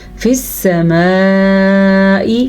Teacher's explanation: الف حروف مدہ ہے, حروف مدہ کے بعد حمزہ آ گیا تو مد متصل واجب یہ مد پیدا ہو گئی